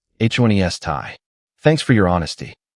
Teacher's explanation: It means telling the truth, even when it's hard. Stress the first syllable, honesty. Thanks for your honesty.